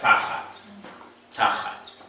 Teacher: Again, medium length vowel. It's going to sound like you're leaning on the first syllable.